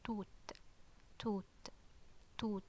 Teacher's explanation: toward the end maybe we release a bit of air when we pronounce that ta